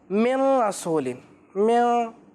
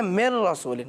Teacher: direct آپ میم کو ملائیں گے را سے